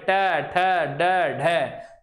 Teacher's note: बिल्कुल जीभ टकराएगी मूर्धा पे